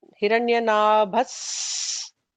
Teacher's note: Visarga followed by Sa, there is an extra sibilant there.